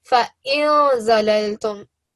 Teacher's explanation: we hide the noon and we give it a nasal sound